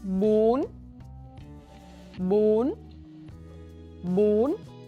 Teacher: apply the tense high raising tone on bún